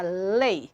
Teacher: Em lei, eu tenho esse ei, que é um ditongo. Eu tenho um encontro de uma vogal, o e, forte, com uma semivogal numa mesma sílaba. Mas de sonoridade fechada